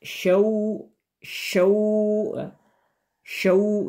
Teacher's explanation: ini adalah huruf lin. Cara membacanya itu dipanjangkan 2 harakat.